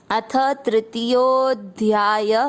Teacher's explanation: विसर्ग को पढ़ना है ह